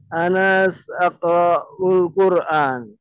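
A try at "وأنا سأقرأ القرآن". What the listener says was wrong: Nah, nampaknya antum tidak menyukai huruf waw ya? Dari tadi di skip mulu soalnya.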